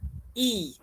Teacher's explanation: Untuk nama tinggi dan rendah pula, itu adalah kedudukan lidah. Bila kita sebut vokal depan sempit atau vokal depan tinggi, E, lidah kita tu kalau awak perasan akan tinggi. Lidah kita akan naik tinggi.